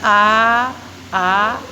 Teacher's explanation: एक होता है विव्रत, मुख विवर खुला रहता है, इसमें मुंह खुला रहता है पूरा। जैसे बोल के देखें आ, तो मुंह को खोल के देखिए तो इसमें मुंह खुला रहता है, ये होता है विव्रत।